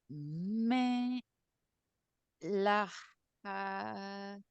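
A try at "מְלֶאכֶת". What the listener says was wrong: Make sure it's an eh sound. Melechet.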